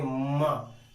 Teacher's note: माँ बोलते समय आपकी नाक पहले झनकती है, ना ना आप बोलते हैं तो पहले तो आप झनकार लेती है नाक, तब मुख से आवाज निकलती है, तब मुख से ध्वनि निकलती है। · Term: अनुनासिक